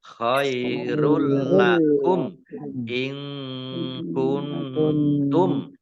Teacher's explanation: Idgham bila gunnah masuk dengan tidak mendengung. Masuk ke huruf lam ditandai lamnya ada tasdidnya. Lamnya dibaca double